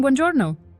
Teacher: notice how we stress the second to last syllable